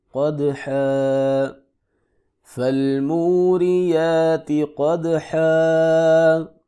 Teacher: قاف کو موٹا کر کے پڑھیں گے، دال ساکن ہے، یہاں پہ قلقلہ ہوگا ، حا کے اوپر تنوین ہے، تو تنوین کرنے کی صورت